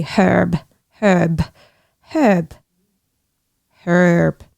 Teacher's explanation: Well, I'm very West Country and we pronounce our R, so I would say herb.